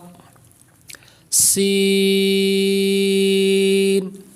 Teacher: سین کو پڑھیں گے تو سیٹی کی آواز پیدا کریں گے